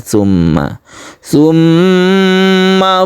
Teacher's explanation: Musyaddadah artinya gunnah karena bertasydid. Dipanjangkan, ditahan ketika membaca summa. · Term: gunnah musyaddadah